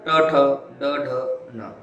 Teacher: जे वर्ण उच्चारताना आपल्या जिभेच्या शेंडात मूर्धाला म्हणजे वर भेटतो त्याला आपण मूर्धन्य असे म्हणतो.